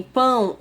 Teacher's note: E nasal, porque o som sai pela boca e pelas fossas nasais.